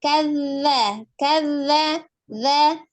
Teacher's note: Ujung lidahnya menyentuh ujung gigi seri bagian atas. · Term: huruf zal